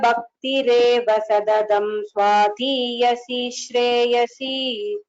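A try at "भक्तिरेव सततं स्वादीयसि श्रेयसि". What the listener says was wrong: Only the Mahapranas again you have to concentrate.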